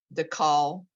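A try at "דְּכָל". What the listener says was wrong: It's guttural. Ch.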